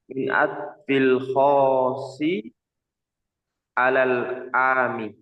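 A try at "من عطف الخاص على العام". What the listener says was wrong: Nah, pakai tasydid khasi 'alal 'ami.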